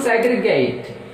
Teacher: Segregate, so segregate, so 3 syllables, so that stress is on first syllable